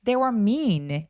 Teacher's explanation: They were는 중요한 키워드 아니니까 약간 힘 빼서